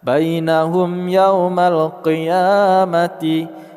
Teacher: Mim mati bertemu dengan ya izhar syafawi kita baca secara jelas. Qiyamati ya panjang 2 harakat.